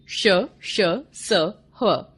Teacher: इनका उच्चारण करते समय हवा मुंह में बहुत अधिक रगड़ खाने के कारण थोड़ी उष्म यानी गर्म हो जाती है। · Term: उष्म व्यंजन